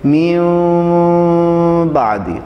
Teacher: پوری طرح میم نہیں پڑھنا، یعنی پوری طرح اپنے ہونٹ جو ہے وہ بند نہیں کرنے ہیں، من بعدی ایسے نہیں، بلکہ میوں بعدی، تھوڑے سے آپ کے لپس یعنی ہونٹ کھلے رہیں اور تھوڑی سی ہوا ان کے اندر سے آتی رہے.